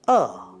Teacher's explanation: this vowel is articulated with the tongue placed centerly in the oral cavity at the mid position while the lips are unrounded and in a neutral posture. The jaw is moderately lowered and the air stem flows freely through the vocal thread without any constriction. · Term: mid central unrounded vowels, mid-central unrounded vowel